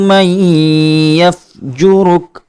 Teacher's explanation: نون کا یا میں ادغام کر دیا گیا ہے، اور یہاں ادغام کرتے ہوئے ایک الف کے برابر غنہ بھی کیا جائے گا